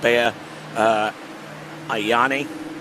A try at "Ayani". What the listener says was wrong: Still too many vowels. Ayani? No, it's just Yanni. the Greek name.